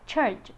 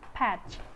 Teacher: Ch is voiceless alveopalatal affricate